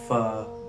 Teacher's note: जुबान की नोक जब नीचे वाले ऊपर वाले दोनों दांतों की नोक जब नीचे वाले होंठ के दरमियान आ जाए, फा, ऊपर वाले 2 दांत नीचे वाले होंठ में लग रहे हैं तो फा अदा होता है।